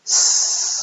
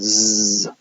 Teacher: if s is a fricative without vibrating the glottis, then z is a fricative when you do vibrate your glottis.